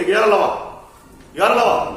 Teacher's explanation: अंतस्थ व्यंजन जिसको बोलते समय किसी प्रकार की रुकावट उत्पन्न नहीं होती है, उसे अंतस्थ व्यंजन कहते हैं।